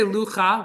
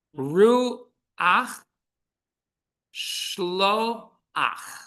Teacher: So at the end of the word, the vowel is pronounced before the letter.